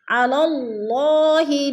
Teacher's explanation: اللہ اسم سے پہلے لام کے اوپر زبر ہے تو اللہ کو پر کر کے پڑھیں گے